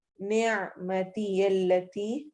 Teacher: इसमें आइन क्लियर होगा, नेमती यल्लती नहीं पढ़ना।